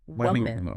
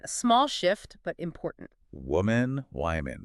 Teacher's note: That first O sounds like the vowel in book or put, woman. And the second syllable is reduced, like mun